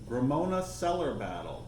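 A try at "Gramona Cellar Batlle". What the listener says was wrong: Battaglia. Battaglia. No, it's Gramona. You said it like a French R. Gramona Cellar Battaglia.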